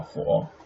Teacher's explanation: Third tone, 火, short, right? It's pretty short.